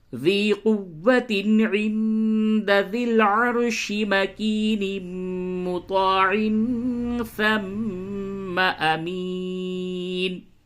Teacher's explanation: میم میں ادغام مع الغنہ ہوگا، تو یہاں پہ ادغام کریں غنے کے ساتھ